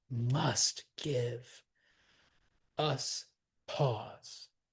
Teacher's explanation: Give, absolutely stressed, but must needs to be stressed. So this line starts with a spondy.